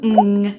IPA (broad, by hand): ŋ